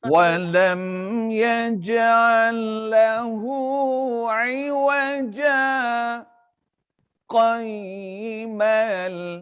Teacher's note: Terberhenti seketika itu sepanjang 2 harakat itulah dinamakan saktah. Saktah. Nafas yang sama.